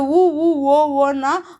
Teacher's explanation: உ, ஊ, ஓ, ஓ, ஔ ஆகிய ஐந்தும் வாய் திறக்க முயற்சியுடன் இதழ்களை குவிப்பதால் பிறக்கின்றன